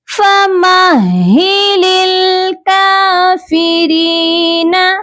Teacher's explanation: را کو باریک پڑھیں گے کیونکہ را جو ہے جب زیر کے ساتھ پڑھا جاتا ہے اس کو باریک پڑھا جاتا ہے